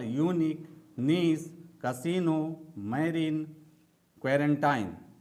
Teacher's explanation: इन शब्दों में आई का उच्चारण बड़ी ई की तरह होता है। यानी कि जब इसमें आई का उच्चारण करते हैं, तो इसमें ज्यादा समय लगता है